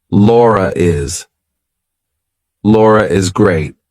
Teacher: if I have to link my name to something else that's a vowel, I have to put an R in there. So I say, Laura is. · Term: intrusive R